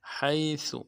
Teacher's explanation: ہا کو گہرائی سے ادا کریں گے اور سا کو باریک ادا کریں گے، سا باریک ادا ہوگی۔